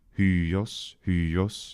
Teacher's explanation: you have a little yodish sound in there. It just happens to be rounded at the same time.